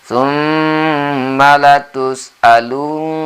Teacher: Tsumma latus'alun. Nah, alun n-nya di sini tasjid sehingga gunnah membacanya atau dengung ya